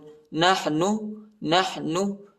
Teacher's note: نون کو کھینچنا نہیں ہے، ٹھیک، نحنو نہیں ہے، نحن، نحن ہا کو وسط حلق میں پڑھنا ہے، یعنی گلے کے درمیانی حصے میں پڑھنا ہے۔